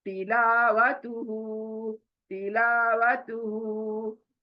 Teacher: तिला ला खींचना है, वह जल्दी, तू जल्दी, हु खींचना है